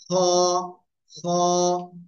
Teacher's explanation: গলার শেষ ভাগ থেকে এই অক্ষরটা উচ্চারণ হবে মোটা আওয়াজে।